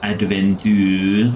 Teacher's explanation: That was a pretty good guttural R.